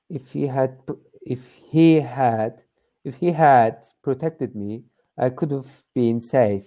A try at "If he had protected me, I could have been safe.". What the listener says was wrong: Mm-hmm. Good.